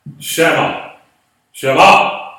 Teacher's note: Accent on the last syllable.